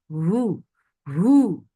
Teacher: the sound is from last part of your throat.